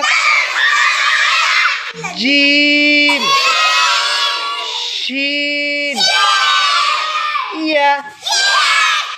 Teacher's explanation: 6 number মাখরাজ জিহ্বার মধ্যখান তার বরাবর উপরের তালুর সঙ্গে লাগাইয়া